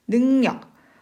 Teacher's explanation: 앞에 나와 있는 이응 때문에 뒤에 있는 리을이 니은으로 바뀌었기 때문에. 자, 이것은 비음화입니다.